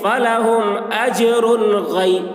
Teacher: اب یہاں پر دیکھیے تنوین کے بعد حروف حلقی میں سے غین آ رہا ہے، اس لیے تنوین کو ظاہر کر کے بلا غنہ کے جلد پڑھیں گے، اس کو اظہار کہتے ہیں